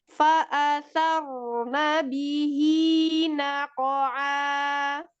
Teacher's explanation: Nah, di sini sa-nya tipiskan dulu, ro-nya, ro sukunnya baru tebal. Fa'asa, sa-nya keluar jelas, baru ro-nya sukun tebal.